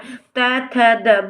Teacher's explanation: बोल के देखेंगे बच्चे तो हमारी जीभ कहाँ जाके टकराती है? हमारी जीभ दांतों पे जाके टकराती है